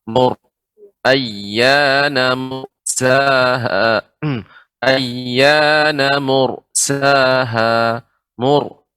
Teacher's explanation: ra yang sukun sebelumnya dhammah dibaca dengan tebal